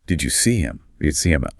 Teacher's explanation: In unstressed pronouns like him or her, that initial H sound just vanishes. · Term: disappearing H